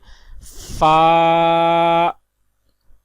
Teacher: فا کا مخرج ہے اوپر کے دانتوں کے کنارے اور نچلے ہونٹ کے تر حصے سے ادا ہوتا ہے